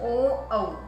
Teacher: कंठ और ओष्ठ ओ, औ। ओ, औ बोलते हैं तो हमारी होठों की बनावट गोल हो जाती है बच्चों